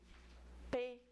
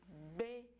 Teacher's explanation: essa obstrução é total eu junto os lábios e só quando eu solto os lábios é que o o restante do ar passa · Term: oclusiva